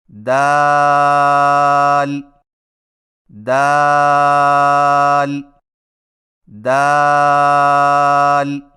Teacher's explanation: دال کی ادائیگی میں زبان کی نوک کو ثنایا علیہ کی جڑ سے لگا کر باریک آواز میں پڑھیں